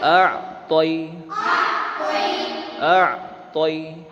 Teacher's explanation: اِنَّا، اس کے بعد دیکھیے حمزہ پر زبر ہے اور عین پر جزم ہے، اور عین کو دبا کر پڑھیں گے حلق کے درمیان سے